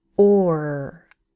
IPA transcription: ɔɚ